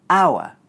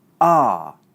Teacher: one way is aʊə; the other way is ɑː.